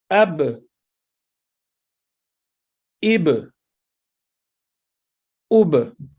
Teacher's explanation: دونوں ہونٹوں کو ملاتے وقت جہاں با کی آواز ختم ہوتی ہے تو وہ مقام حرف با کا مخرج ہے